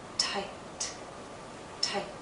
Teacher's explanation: I have this vowel sound, but because the T follows, it's shorter.